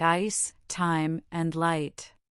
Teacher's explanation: And this lane sound, the diffthani, is a journey your mouth takes from a wide open position to a relaxed smile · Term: long I sound